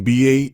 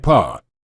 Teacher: In addition, they are both produced in the same manner of articulation, stop, or sounds that require the speaker to obstruct the airstream. The only difference is the B sound requires the vocal tract to activate and make a sound, whereas P does not.